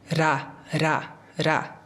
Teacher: O nosso R, quando a gente fala, a gente encosta a língua no céu da boca, né? Ra, ra, ra.